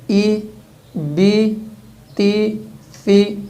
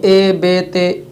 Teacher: پے ہوتا ہے، لیکن یہاں پہ عربی کے الفاظ میں جب زیر پڑھی جاتی ہے تو زیر کی آواز میں ای بی تی فی یہ آواز نکالنی ہے، یعنی اے بے تے اس سے بچنا ہے